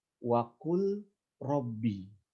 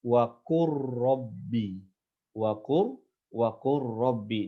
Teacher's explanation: huruf lam dengan huruf ro, huruf lam dengan huruf ro, ini berdekatan makhrajnya. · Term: idgham